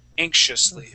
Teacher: that X and I is going to make a sh sound